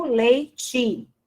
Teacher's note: Eu pronuncio o E, a representação da vogal E final, como I.